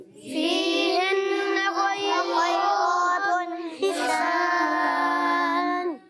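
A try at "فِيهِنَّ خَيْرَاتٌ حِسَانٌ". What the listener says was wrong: اچھا جلدی نہیں کرنی، جہاں غنّے ہیں یہاں نون مشدد میں غنّہ ہے تو آپ نے وہاں پر ایک الف کا غنّہ کرنا ہے.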